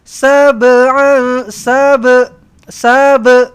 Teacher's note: lantunkan ba ni qalqalah sugra